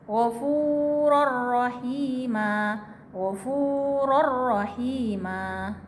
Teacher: Ro dan lam. Jadi dia dibacanya itu bertasdid ya, seperti bertasdid tanpa dengung. Jadi tidak boleh disertai dengan dengung. · karena idgham bilauna maka tanwinnya melebur ke huruf ro menjadi ghafuror. Tidak dibaca ghafuron tapi ghafuror, ada tasdid, seolah-olah ada tasdid tapi tidak ada tasdid.